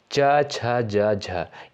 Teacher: च वर्ग के अंतर्गत जितने भी वर्ड आते हैं इनका उच्चारण स्थान किससे होता है तालू से होता है यानी तालव्य से होता है